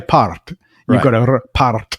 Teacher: don't say it the way Americans would say it because it's got to be trilled